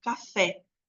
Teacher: em café o e é uma vogal aberta né porque ele tem uma sonoridade maior